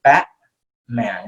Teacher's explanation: it's almost like not pronouncing the t at all okay so you're not saying batman but you're saying bat man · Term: glottal stop